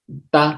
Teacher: Hay otros puntos de articulación, a uno que se le conoce como alveolar, porque la lengua va hacia los alvéolos, que es esta parte rugosa del techo de la boca.